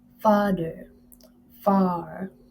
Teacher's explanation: Ah, next is a a open center vowel sound pronounced in the back of the vocal tract with the tongue completely open and low in the mouth and the lips in a spread position